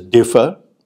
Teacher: the first syllable is stressed so you say that the word differ has two parts to it two syllables